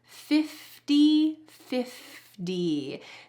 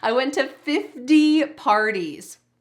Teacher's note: When we say 50, the T changes to a D sound in American English.